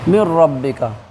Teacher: نون کو حذف کر دیے، نہیں پڑھ رہے ہیں، کیوں؟ اس لیے کہ یہاں پہ نون ساکن کے بعد را آ گئی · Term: ادغام